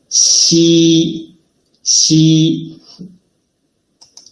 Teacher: tongue approaches the hard palate without reaching it, leaving a gap in between